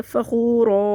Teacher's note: وقفی صورت میں نون قدنی ختم ہو جائے گی اور اس کو ایک الف برابر کھینچ کے وقف کریں گے فخور، کیونکہ یہ الف مدہ ہے، الف سے پہلے زبر، اس لیے اس کو وقفی صورت میں کھینچ کے پڑھیں گے.